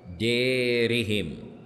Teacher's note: الالف فلابد ان تميل ما قبلها لابد ان تميل ما قبلها يعني انت تنحو بالفتحه التي على الدال نحو الكسره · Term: الاماله, الإمالة